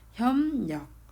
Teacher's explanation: 비읍 뒤에서 리을이 니은으로 바뀌어요. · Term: 비음